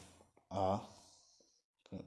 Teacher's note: मुख के जो ओष्ठ हैं, ओष्ठ की आकृति गोल नहीं होती है। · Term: अव्रतमुखी